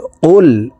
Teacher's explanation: কফ হরফ জিহ্বার গোড়া তার বরাবর উপরের তালুর সঙ্গে লাগাইয়া উচ্চারণ করে পড়তে হবে